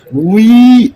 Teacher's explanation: பல்ல கடிச்சுட்டு சொல்லக்கூடிய அப்படிங்கிற உச்சரிப்பையும் ஈ அப்படிங்கிற உச்சரிப்பையும் சேர்த்து உய் அப்படின்னு சொல்லியிருக்கேன்